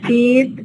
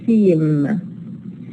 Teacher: Here the E is nasalized because it is followed by a nasal consonant, And it is also lengthened because it is followed by a voiced consonant. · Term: vowel nasalization